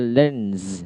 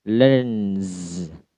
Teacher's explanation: dibaca Z juga karena akhirannya adalah N, voice consonant